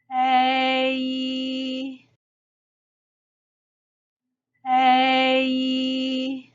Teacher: ㄟ is pronounced like ㄝ plus 一 · is pronounced like ㄝ plus 一 你需要在 ㄝ 末尾添加一個 一 的音 you need to add a 一 sound at the end of ㄝ ㄟ ei ㄟ ei 好 第五組容易混淆的發音 ㄣ及ㄥ OK the fifth group